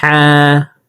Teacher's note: হালকের মধ্যখান থেকে হা হরফকে উচ্চারণ করব